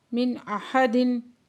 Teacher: نون ساکن کے بعد حمزہ ہے تو یہاں پہ اظہار حلقی کا قاعدہ ہو رہا ہے